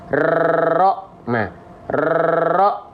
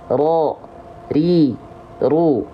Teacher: ro bergetar tetap di lidah, tapi dia hanya sedikit mengeluarkan getarannya. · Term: sifat takrir